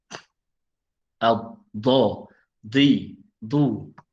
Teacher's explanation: Dan kat mana kita tempatkan lidah kita? Pastikan lidah kita menyentuh salah satu daripada dua geraham. Dua geraham atas. Do. Tak kira lah kita selesa belah mana, kanan ke kiri. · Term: huruf dot